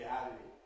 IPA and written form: ˈɦæbi (happy)